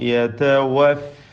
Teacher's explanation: വ എന്ന് രണ്ട് ചുണ്ടിൽ നിന്നും ഫ എന്ന് താഴെ ചുണ്ടും മേലെ മുൻപല്ലും ചേർത്തുമാണ് ഉച്ചരിക്കുക